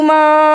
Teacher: ما چھوٹی مد پڑی ہے، ایک اور آدھی انگلی کے برابر لمبا کیا